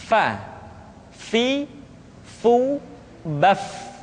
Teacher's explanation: Berikutnya, pengucapan huruf fa. Diucapkan dengan menyentuhkan ujung dua gigi seri kita bagian atas dengan bibir bawah bagian dalam.